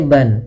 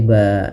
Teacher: kita iwatkan, kita ganti dengan panjang disebabkan karena kita wakaf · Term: mad iwad